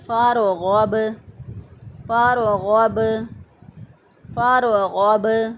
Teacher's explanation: را کو موٹا کر کے پڑھیں گے کیونکہ فا کے اوپر زبر ہے · اس کو پڑھیں گے فَارْغَب، فَارْغَب، فَارْغَب۔ غین زبر با غب، غین کو اسی طرح ہم نے ادنی حلق سے ادا کیا، یعنی گلے کا وہ حصہ جو سینے کی طرف ہوتا ہے وہاں سے غین ادا ہوگا · سینے کی طرف ہوتا ہے وہاں سے غین ادا ہوگا، اور با جو ہے ساکن ہے، یہاں پہ قلقلہ کی آواز پیدا کریں